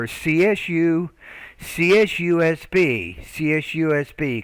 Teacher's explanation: with these the abbreviations we put equal emphasis on every letter